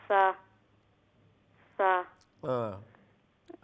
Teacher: জিহ্বার আগা সামনের উপরের 2 দাঁতের আগার সঙ্গে লাগাইয়া